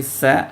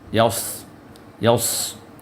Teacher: اب یہاں دیکھیے پہلے سین ہے، پھر اس کے بعد یا ہے، پھر صاد ہے، تو سین اور صاد کے ساؤنڈ میں فرق ہونا چاہیے، سین باریک ہوگا، صاد موٹا ہوگا، تو صاد کو پر کر کے پڑھنا ہے